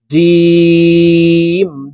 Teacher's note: জিম হরফ জিহ্বার মধ্যখান থেকে উচ্চারণ করব